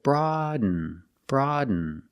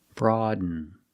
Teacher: You do a stop D, you put the tongue up, broad, and you fall to an N.